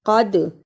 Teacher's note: قاف کو موٹا پڑھنا، دال پر جزم ہے، یہ حرف قلقلہ ہے